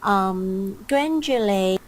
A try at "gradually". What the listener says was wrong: Okay, there's no n sound. It's gradually, not gradually.